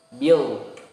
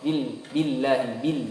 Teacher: Nah, huruf lam di sini tipis. Jangan sampai tebal.